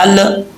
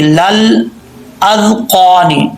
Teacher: ساکن ہے یہ لام. تو پڑھتے ہوئے لام میں قلقلہ نہیں کرنا، لام پہ آواز جم جائے. یہ لل، یہ قلقلہ ہے، یہ لل ایسا نہیں کرنا. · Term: لام ساکن